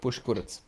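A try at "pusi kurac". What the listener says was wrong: No, it's like push but with an I at the end. Pushy. Pushy, like somebody's being pushy.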